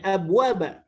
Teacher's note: Bunyi qalqalahnya hilang masuk ke huruf waw sehingga seperti idgham.